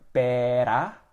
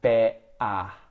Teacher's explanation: Instead of them using the tongue to stop the air by going better, that kind of movement, they're using their throat to do it.